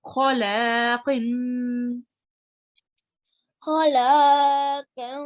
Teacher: you read the qaf from the throat as well